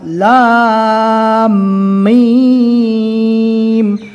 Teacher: ہم نے یہاں پر میم کو لام سے ملا کر پڑھا اور سختی کے ساتھ لام میم، اور 2 مرتبہ بھی پڑھ لیا۔